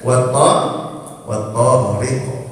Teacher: Nah, lamnya melebur ke huruf th · lamnya melebur ke huruf to karena huruf to-nya adalah huruf hijaiyah syamsiyah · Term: idgham syamsi